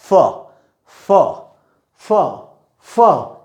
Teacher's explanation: English में जो फ होता है वो अपर टीथ एंड लोअर लिप।